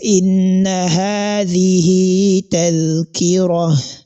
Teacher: So in this verse 29 of Suratul Insan, so let's assume you don't want to stop, that is, you want to stop on this pause sign as I just did, that is inna hadhihi tadhkira. So as long as you are stopping there, the ta marbuta is going to be converted to ha